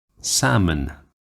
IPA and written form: ˈsæmən (salmon)